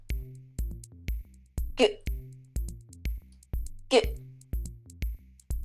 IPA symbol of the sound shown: g